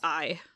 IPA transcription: ai